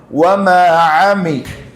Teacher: മീ പറയുമ്പോൾ രണ്ട് ചുണ്ടിന്റെയും ഉണങ്ങിയ ഭാഗം മുട്ടണം